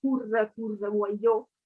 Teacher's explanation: you have a lot of schwas in the end of the words